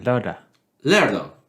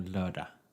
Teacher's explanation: So you don't pronounce the last G. It's more lördag.